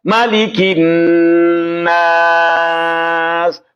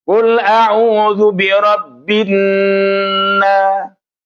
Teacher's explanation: Nun yang bertasydid ini harus ditekan 2 harokat.